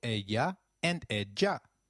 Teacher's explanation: Did you notice the pronunciation of ella? In Spanish, double L takes up the sound of Y in some areas and a soft J in others.